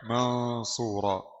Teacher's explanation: نون ساكنة مخفاة عند الصاد المضمومة بغنة حركتين · Nun bersukun di samar pada huruf sad berharakat dhammah dengan gunna 2 harakat. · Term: إخفاء, ikhfa